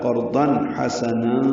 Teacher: تنوین کے بعد حا آنے کی وجہ سے اظہار ہے